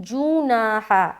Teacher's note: جیم کی آواز مجہول نہ ہو، جناح نہیں بلکہ جوناح